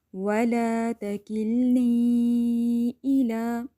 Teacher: وَلَا تَكِلْنِي إِلَىٰ، اب یہ جو میں نے بلو لگایا ہوا ہے لائن، اس کا مطلب ہے یہاں مد منفصل ہو رہا ہے، یعنی آپ نے 4 سے 5 حرکات کھینچ لینا ہے۔ اگر آپ یہاں پہ رک رہے ہیں وَلَا تَكِلْنِي، پھر آپ نے یا مد ادا کرنا ہے۔